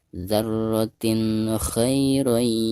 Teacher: Di sini kha. Maka cara membaca tanwin yang ada di bawah ta tersebut itu harus dijelaskan atau dizahirkan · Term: huruf izhar